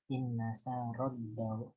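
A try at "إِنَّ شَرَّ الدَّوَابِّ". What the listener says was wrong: Ro-nya tasdid dan juga langsung masuk ke dal tasdid. Danya enggak panjang. Iya, langsung ke wa. Dawa. Terakhir itu dibaca inna syarrad dawabi.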